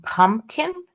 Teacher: we have an m, and we have a stressed schwa, which is going to be nasalized